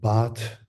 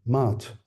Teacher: this speaker replaces the bilabial oral plosive on quite a number of occasions by m. So instead of baat, we'll say maat on occasions.